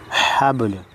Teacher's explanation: با حروف قلقلہ میں سے ہلا کر پڑھیں گے